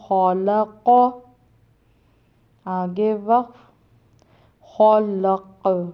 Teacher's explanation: خا پڑھی زبر خا، لام پڑھی زبر لا، خولا، قوف پڑھی زبر قو، یہ دو نقطوں والا قوف ہے، یہ حلق سے بھی نکلتا ہے اور اس کو موٹا بھی پڑھا جاتا ہے، اس لیے یہ خلق، آگے وقف خلق، اب یہ بھی قوف جو ہے حروف قلقلہ میں سے، اس لیے اس کو خلق، جب ساکن کریں گے تو اس کو قلقلہ کریں گے.